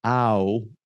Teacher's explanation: ow is an ah and a oo sound that just transition into each other. And so it's two. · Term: diphthong